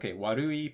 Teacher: pitch accent is on the second mora.